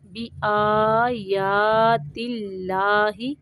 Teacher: یہاں پہ اللہ کا نام باریک پڑھیں گے